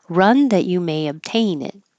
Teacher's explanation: the N will connect and it'll sound like knit and then hold the t